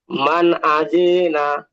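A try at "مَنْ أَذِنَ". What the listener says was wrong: আজি টান হবে না,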